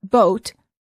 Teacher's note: for the O sound as in boat the lips are rounded